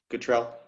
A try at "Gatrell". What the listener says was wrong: It's Gatrell. It's Gatrell. it's a long A. English, not French.